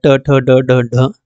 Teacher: मुर्धा इसका जो है उच्चारण स्थान है दांत से थोड़ा पीछे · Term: मुर्धन्य